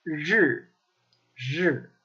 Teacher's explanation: In the north, it's curled back more. They have what's called a really heavy zhenshe, a really heavy tongue curl.